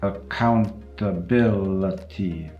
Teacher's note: 3 times in the same word. Every other syllable is a schwa. · If you take the word accountability, it has 3 schwas in it.